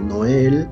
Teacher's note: Noel sigue siendo palabra aguda, la sílaba tónica es la última, pero como termina en L, no termina en N ni en S, no lleva acento ortográfico.